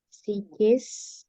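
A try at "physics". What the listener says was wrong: Ini bukan psikis, psychic. Fisika.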